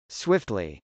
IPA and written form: swˈɪftli (swiftly)